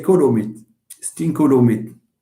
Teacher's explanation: So e becomes u because later you have another u sound. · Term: vowel harmony